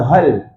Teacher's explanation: Jadi bila sebut hal tu turunkan pangkal lidah. Dengar eh. Kalau tak turunkan bunyi dia hal nak baca hal hel.